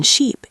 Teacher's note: The vowel in sheep is long and tense. Your mouth is more closed and your tongue is higher and more forward.